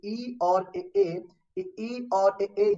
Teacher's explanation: इनको बोलने में जीभ के अगले भाग का प्रभाव ज्यादा पड़ता है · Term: अग्र स्वर